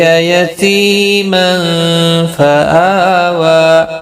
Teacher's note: الف کے اوپر اور واو کے اوپر، دونوں کے اوپر کھڑی حرکات ہے، کھڑی زبر ایک ایک الف کی مقدار کے برابر کھینچ کر پڑیں گے